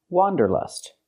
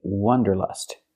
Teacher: For the first vowel, for the first syllable, use the open ah sound, like hot and stop. Wa. Wanderlust.